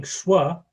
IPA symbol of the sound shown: ʃw